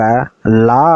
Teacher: நாவோட இரு பக்கங்கள் தடித்து மேல்வாய் பற்களின் அடியை தொடுவதால் இந்த லகரம் பிறக்குது